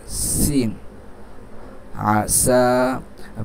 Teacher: জিহ্বার আগা সামনের নিচের দাঁতের গোড়ার সাথে লাগিয়ে, সিন। আসা।